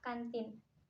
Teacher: Konsonan nasal alveolar bersuara yaitu N. Dihasilkan dengan cara menempelkan ujung lidah pada gusi untuk menghambat udara pada paru-paru, kemudian dikeluarkan melalui rongga hidung